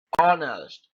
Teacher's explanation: यहाँ पे ऑनेस्ट H silent है, एच नहीं बोलता है